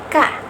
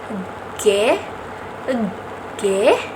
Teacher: Selanjutnya ada bunyi dorsoveller. Bunyi ini dihasilkan oleh keterlibatan pangkal lidah dan keterlibatan langit-langit lunak. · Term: dorsovelar